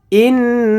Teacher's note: জানি সাকিন অথবা তানবিনের পরে 15 টি হরফের যেকোনো একটি আসলে নাকের ভেতর লুকায়ে গুন্নাহ করে পড়তে হয়